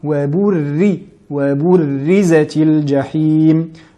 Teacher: la lettre ra ici qui est assez difficile à prononcer, qui est accentuée, mushaddada, qui doit être prononcée aminci, et non wa burri, mais bien wa burrizatil jahim.